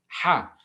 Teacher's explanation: when the glottis is open and there's no manipulation of the air passing out of the mouth. The sound produced is that represented by ha. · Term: ग्लोटल साउंड